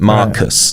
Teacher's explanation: Mark is the stressed syllable, and then the us is unstressed